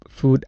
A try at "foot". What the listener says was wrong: So foot had two things. One was the vowel. I heard a oo and a D at the end, which made it sound like food, which is a completely different word than foot. So watch out for your vowels and your final sounds. Foot, food, foot, food.